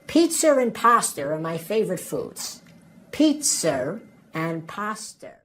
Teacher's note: we add an extra R sound in between those two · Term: intrusive R